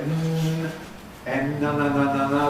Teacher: when you say [n], [n(a)] …, the air can escape freely through the nose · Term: nasals